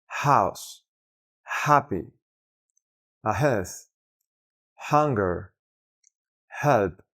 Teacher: Su sonido podremos encontrarlo en palabras como house, happy, ahead, hunger, help, etc. Este fonema suena solamente como fricción y sonido de aire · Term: H sound, H-sound